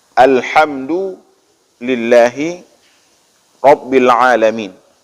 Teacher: Kita perhatikan ketika membaca huruf ha itu di tengah tenggorokan. Jangan dibaca dengan bacaan ini dengan pangkal tenggorokan.